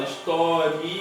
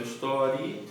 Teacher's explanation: Você percebe que do I, que ele sai bem fraquinho e vai para o A, que é mais forte. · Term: ditongo crescente